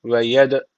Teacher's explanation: D harfi cezim almış. Kalkale tecviti var. Birazcık vurguluyoruz.